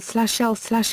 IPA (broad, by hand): l